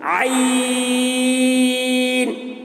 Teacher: عین، دیکھیے عین حلق سے ادا کرتے ہیں اور اس کو بھی زیادہ کھینچ رہے ہیں کیونکہ یہ بھی 3 حروف سے مل کر بنا ہے، عین یا نون سے. عین حلق سے طاقت لگا کے بولنا پڑتا ہے، حلق پہ زور ڈالنا ہے، طاقت لگا کے بولیں گے، حلق کو کھولیں گے تب اس کی ادائیگی صحیح ہوتی ہے.